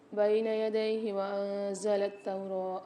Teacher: انزل میں نون ساکن کے بعد زا رہی ہے، یہاں پر غنہ کر کے پڑھیں گے